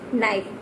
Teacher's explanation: We will never pronounce K sound. We will always leave the K sound. We will have to necessary K sound as a silent mode.